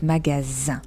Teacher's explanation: It's magasin. So the S is pronounced like a Z.